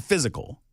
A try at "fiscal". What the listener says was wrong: You're doing like a Z instead of an S. Fiscal.